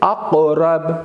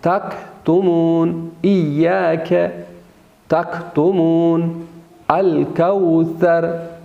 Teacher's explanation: قاف کو ہم موٹا اور پر ادا کریں گے، بولڈ ادا کریں گے اور سخت ادا ہوتا ہے، جبکہ کاف نرم ادا ہوتا ہے اور وہ بولڈ نہیں ہوتا، باریک ادا ہوتا ہے · اسی وجہ سے ان حروف کو حروف لحاتیہ کہتے ہیں، چونکہ لحات یعنی اس کوے کے ساتھ زبان کا آخری حصہ یعنی زبان کی جڑ وہاں پہ ٹکراتی ہے، تو یہ حروف ادا ہوتے ہیں